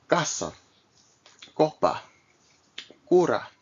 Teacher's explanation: So, before the following three vowels, casa, so A, O, and U, unlike the English K sound, the hard Spanish C is not aspirated. That is, no air is expelled when it is pronounced.